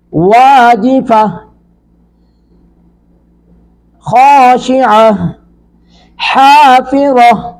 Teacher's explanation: تائے تانیث بھی اس کو بولتے ہیں، تو یہ وقف کی حالت میں یہ ہا ساکن میں بدلتی ہے ، وقف کریں گے تا ساکن نہیں بنائیں گے، یہ ہا